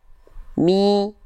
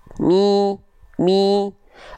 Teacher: huruf-huruf vokal i itu dia direndahkan rahang bawahnya plus diangkat tengah lidahnya ke arah atas.